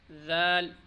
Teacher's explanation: ذال بہت نرمی سے ادا ہوگا اور تبھی صحیح ادا ہوگا جب زبان کی نوک سامنے والی دانتوں کے کنارے پر لگے گی، تو اس سے ذال بہت نرمی سے ادا ہوگا۔